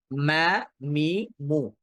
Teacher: এখানে দুই ঠোঁটের ভেজা অংশ থেকে উচ্চারিত হয়। এটা হারফটার এক্স্যাক্ট মাখরাজ বা এক্যাক্ট উচ্চারণ বের হওয়ার জায়গা।